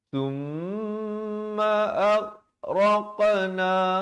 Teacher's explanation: raq ada lantunan, tapi ghain tak ada lantunan